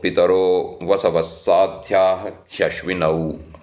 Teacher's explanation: Now, Ashvinau, because most of us who speak the Hindi language, we pronounce O as O, not Au, but in Sanskrit it should be pronounced Au